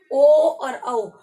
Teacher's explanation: ओ और औ। कंठोष्ठ, कंठ और ओष्ठ इन दोनों स्थानों का प्रयोग किया जाता है